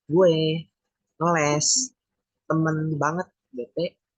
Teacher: vokal E sebagai vokal depan, tengah, tegang, dan tidak bulat